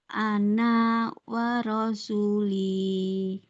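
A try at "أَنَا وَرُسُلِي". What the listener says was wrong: Ana yang ini nggak panjang ya Mbak. Dia ada tanda bulat begini. Itu maksudnya nggak panjang. Ana wa rusuli.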